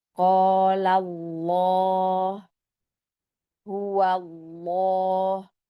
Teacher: jadi lafaz Allahnya ini tebal ya karena dia didahului oleh fathah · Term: lam dibaca tebal